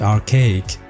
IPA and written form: ɑːrˈkeɪɪk (archaic)